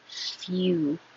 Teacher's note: you really do make a Y. Your tongue is starting in the Y position.